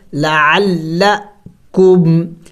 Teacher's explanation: عین کو حلق سے ادا کرنا ہے اچھی طرح